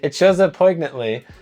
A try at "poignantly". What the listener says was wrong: I don't think you're supposed to pronounce the G.